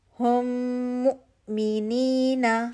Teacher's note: ہم مؤمنین، ہم مؤمنین، ہم میم ساکن، کوئی رول ہے، نیکسٹ لیٹر میم، تو یہاں پہ میم کا ادغام شفوی کا رول ہو رہا ہے، ٹھیک ہے۔ میم مشدد ہو گیا، حمزہ ساکن ہے، جھٹکا دے کے پڑھا جائے گا